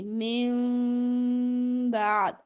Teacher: نون کی آواز کو میم سے بدلنا ہے اور میم کلیئر نہیں پڑھنی ، ٹھیک ہے، نرمی سے ہونٹ ملیں گے، ٹائٹلی نہیں ملائیں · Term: اقلاب